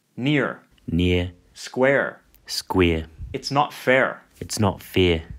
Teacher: the vowels in near and square are pronounced the same by some speakers